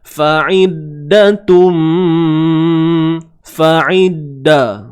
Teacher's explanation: Huruf dal yang bersabdu tuan-puan, dah tak ada dah kedengaran sifat qalqalah tu. Dia ada, cuma kita memang tak dengar lah.